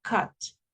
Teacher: Puede ser que a veces sea U, pero no es una u como en español, como redondita, como cuando se tira un beso o dice uva, ¿verdad? No es esa u, es como relax